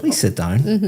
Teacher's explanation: But if I said, please sit down, my intonation is going up.